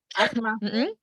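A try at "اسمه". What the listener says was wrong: Ismu, bukan asma tapi ismu. Nah, di sini hamzah wasolnya dibaca kasroh.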